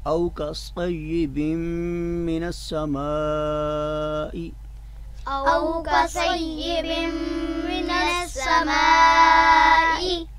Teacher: الف اور لام یہ لفظ سما میں شروع میں آ رہا ہے تو وہ لکھنے میں آ رہا ہے مگر پڑھنے میں نہیں آئے گا